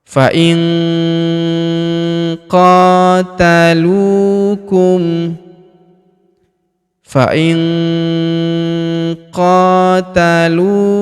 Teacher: Perhatikan huruf nun sukun bertemu huruf qo maka nun sukunnya melebur ke huruf qo kita baca dengung dan samar dengungnya kita tahan dua sampai 3 harakat · Kita baca dengung dan samar. Dengungnya kita tahan 2-3 harokat.